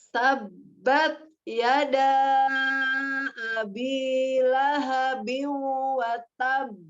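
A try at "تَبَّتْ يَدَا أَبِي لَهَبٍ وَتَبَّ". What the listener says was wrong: Nah, itu penyebabnya karena Umi menaikkan huruf ba-nya. Tabat. Ya, sejajarkan saja. Tabat, ringan. Tabat. Ya, ba itu sifatnya izlak, ya, ringan di huruf ba-nya. Tabat, walaupun ketika dia apa namanya kuat atau tidak makhrajnya, dia termasuk makhraj yang kuat ya, siddah. Jadi bukan tabat. Nah, kalau dia tabat, taknya tidak ada hamznya. Tabat, ringan saja. Tabat.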